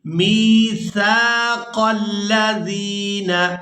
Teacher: میم کو یائے مدہ کے ساتھ ملاتے ہوئے کھینچ کر ادا کریں گے، میثاق الذین، اور سا کو ادا کرتے ہوئے سیٹی کی مثل آواز پیدا نہیں ہونی چاہیے، سا کو ہمیشہ ہی نرمی کے ساتھ ادا کیا جاتا ہے۔